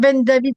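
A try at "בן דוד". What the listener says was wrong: Mishlé Shlomo, Ven David Melech Israël, hein. C'est Ven David, puisqu'il n'y a pas de point, quoi, hein. Maintenant, vous allez entendre certains des rabbins ou quoi qui vont dire Ben David parce que c'est Ben David, hein.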